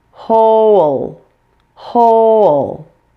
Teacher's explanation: your whole tongue touches the roof of your mouth in addition the L here forms an extra syllable by itself even though it has no vowel with it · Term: syllabic L